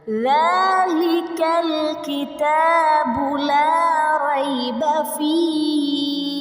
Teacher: Enggak apa-apa panjang. Tapi kalau awal-awal itu harus tabi'i hanya satu alif, ada dua ketukan ya.